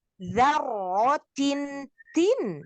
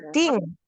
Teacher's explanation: Nun itu ujung lidah ketemu gusi. Jadi harus nempel ketemu gusinya. Jangan nggak ditemuin. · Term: tanwin